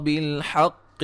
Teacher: قاف کو موٹا ادا کریں گے